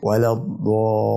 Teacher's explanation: فده حكمه مد لازم، يعني لازم تمده 6 حركات. تمد الالف قبل ما توصل لللام تمدها 6 حركات